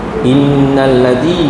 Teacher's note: nun dan mim ada tanda sabdu wajib dengung dua harakat. Panjang sikit. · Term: wajibul ghunah